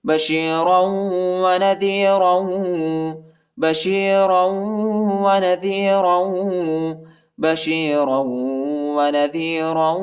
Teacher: را کو واو کے ساتھ ملائیں گے اور غنہ کریں گے